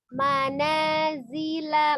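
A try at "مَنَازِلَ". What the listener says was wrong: Oh, la-nya tuh pendek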